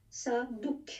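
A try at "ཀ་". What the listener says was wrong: Hein, c'est pas un ça, c'est un ka.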